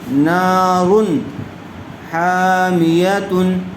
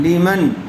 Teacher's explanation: نون ساکن کے بعد حروف حلقی میں سے خا آیا ہوا ہے، اس لیے یہاں پر بھی نون کو ظاہر کر کے بغیر غنے کے جلد پڑھیں گے۔ اس کو اظہار کہتے ہیں۔